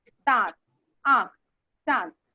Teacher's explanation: लेकिन अनुनासिक में क्या होता है? मुख और नाक दोनों से ही हवा निकलती है, लेकिन नाक से बहुत कम निकलती है और मुंह से बहुत अधिक निकलती है